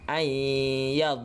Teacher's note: kita akan masukkan nun mati ni dalam ya. Kita akan dengungkan dia sekaligus. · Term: idgham ma'a gunnah